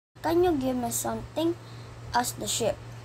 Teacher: the word sheep was read as ship with a short i sound instead of a long e sound